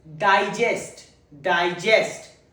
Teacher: The first syllable is stressed on. It's used as a noun in a sentence.